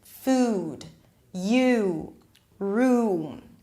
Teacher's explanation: The back of the tongue is all the way up there. The body of the tongue is really close to the soft palate in the back, right? And the lips round. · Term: tense